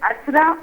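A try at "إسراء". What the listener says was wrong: It is Isra. It is Isra. Yes, with a zayr on the first alif. Isra.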